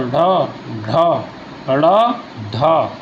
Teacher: उत्क्षिप्त व्यंजन जिनके उच्चारण में जीभ ऊपर उठकर झटके के साथ नीचे आ जाए